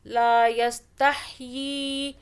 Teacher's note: لا یستحیی، ہا کو حلق سے پڑھیں